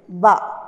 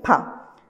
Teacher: so ba is considered as voiced plosive, whereas pa is voiceless plosive